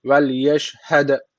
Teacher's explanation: Vel yeşhed derken d harfi cezim almış. Kalkale tecviti var. Birazcık vurguluyoruz.